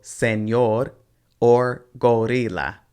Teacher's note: when there's one ere and it falls inside or at the end of a word it has more of a kind of sound like a d